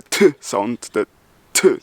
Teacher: If I speak the first character, the T, my breath ramps up and then breaks down immediately to make the t sound